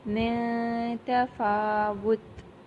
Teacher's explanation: یہ جو ایک ہلکی سی ہماری ناک میں ساؤنڈ جاتی ہے نا، اس کا ہوتا ہے ناک میں آواز کو چھپانا، اور یہ اخفا کی ساؤنڈ ہوتی ہے